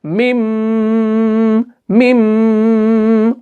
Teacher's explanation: मिम को जो आप खींच रहे हो ना, वो आपको नाक में गुन्ना करना है